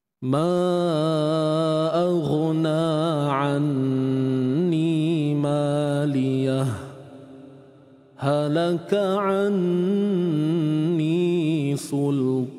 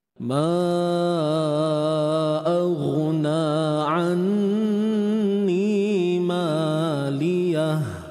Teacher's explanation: Jadi saktah ni berhenti tanpa mengambil nafas yang baru.